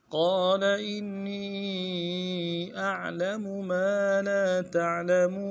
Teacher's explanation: قال میں قاف کو موٹا کریں گے، قاف کے بعد الف مدہ ہے، ایک الف دار میں کھینچیں گے ، لام کو نرم سے ادا کریں گے۔ قال انی حمزہ